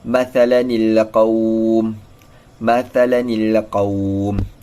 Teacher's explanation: dengan menukarkan tanwin kepada satu baris serta menggantikannya dengan huruf nun yang berbaris bawah. Hal ini kerana iltiqa' sakinain bertujuan untuk merungkaikan suara nun dari tanwin itu, kemudian dibaris bawahkan nun tersebut.